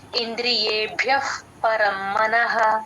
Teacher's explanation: ఎఫ్ మనం ఈ ఎఫ్ ని అందరూ సగమే చెప్తూ ఉంటారు యూజువల్ గా క్యాండిల్ మనం ఊదుతాం కదా ఉఫ్ అని ఆ సౌండ్ రావాలన్నమాట ఇంద్రియేభ్యః అలా గాలి బయటకు వదలాలి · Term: విసర్గ